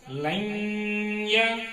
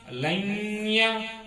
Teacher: دیکھیں نون کی آواز ناک میں جا رہی ہے، گھوم رہی ہے، اور غنہ بھی کرنا چاہیے. غنہ مانے آواز کو ناک میں تھوڑی دیر روک کے رکھنے کا نام غنہ ہے.